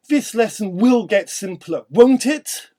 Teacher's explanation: we can use a more rising intonation with strength to suggest a threat if not agreed with.